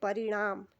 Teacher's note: देखिए और इसके बाद न है तो यहां पर बनेगा शब्द परिणाम। जो न है वो परिवर्तित होगा ण में